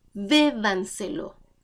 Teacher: Bébanselo, sobresdrújula, se acentúa en la anterior a la antepenúltima sílaba, por lo tanto, siempre lleva tilde.